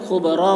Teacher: यहाँ पर वक्फ़ कर रहे हैं तो खुबरा पढ़ेंगे, खुबरन नहीं पढ़ेंगे